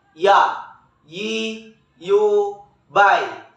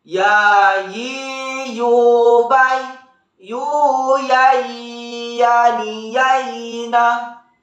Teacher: Huruf ya keluar dari tengah lisan, disentuhkan dengan langit-langit.